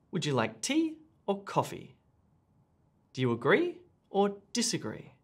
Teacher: if you're asking either or questions notice the rising and then the falling intonation